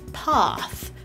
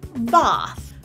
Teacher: if you learned British English in school, your tongue might be further back